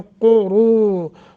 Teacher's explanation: मिन बादिहिम क़ुरूनन क़ुरूरा क़ाफ़ को मोटा, दोनों पे जमा है तो अदा करें। क़ुरू रू को थोड़ा सा लंबा करेंगे, हरूफ मद्दा है।